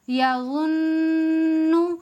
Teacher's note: یہاں نون پر ایک الف کے برابر غنہ کر کے پڑھیں گے ، جیسے یظنو یظنو نہیں پڑھنا ہے، صحیح طریقہ کیا ہے